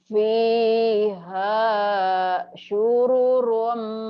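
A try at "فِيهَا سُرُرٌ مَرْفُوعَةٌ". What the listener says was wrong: Sururum atuh. Sururum, sururum, sururum. Bukan syururum. Sururum.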